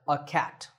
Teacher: Notice that in natural speech, we don’t say ‘a’, we say ‘uh’ – like ‘a cat’.